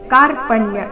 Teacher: ದೀರ್ಘ ಕ ದಿಂದ ಶ್ಲೋಕ ಪ್ರಾರಂಭ ಆಗ್ತಾ ಇದೆ ಕಾರ್ಪಣ್ಯ ಈ ರೀತಿ ಬೇಡ ಕಾರ್ಪಣ್ಯ ಕ ಚೆನ್ನಾಗಿ ದೀರ್ಘ ಬರಲಿ